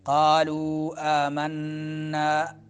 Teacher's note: نون مشدد ہے تو غنہ ہوگا